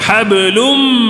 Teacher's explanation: میم پر بھی تشدید آیا ہے نا غنہ کرنا ہے